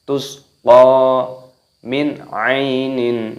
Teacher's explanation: nun sukun bertemu dengan huruf ain, hukumnya dibaca jelas idhar halqi. Jangan dibaca berdengung, misalkan min, tidak boleh.